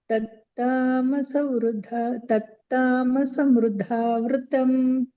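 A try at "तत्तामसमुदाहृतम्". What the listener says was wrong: ಅಲ್ಲಿ ಮು ಇದೆ ಮಾತಾಜಿ ಮೃ ಅಲ್ಲ ತಾಮಸ ಮುದಾಹೃತಂ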